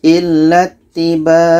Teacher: Selanjutnya ini dalam ayat yang sama ada nun tasydid ketika berhenti. Maka nun tasydid ini hukumnya dengung. Kalau berhenti tetap kita dengungkan dulu.